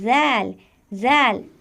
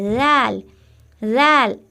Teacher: बहुत ही नरमी के साथ जबान की नोक ऊपर के दांतों के किनारों से लगाकर जाल अदा करेंगे